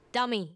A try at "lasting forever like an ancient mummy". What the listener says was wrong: A dummy? You said the spell wrong. I said mummy, not dummy.